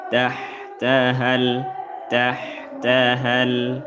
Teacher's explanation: Yang mana sukun pertama adalah huruf mad maka dif huruf madnya dibuang dalam bacaan. Kita tidak membaca lagi madnya langsung masuk kepada huruf sukun berikutnya.